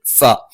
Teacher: മേലെ മുൻപല്ലിന്റെ താഴ്ഭാഗം താഴെ ചുണ്ടിന്റെ പള്ളയിലാണ്